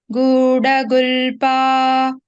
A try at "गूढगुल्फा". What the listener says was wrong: I should put little more stress for pha, okay?